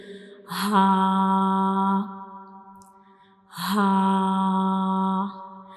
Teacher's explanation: ha is a throat letter and it is pronounced from the bottom of the throat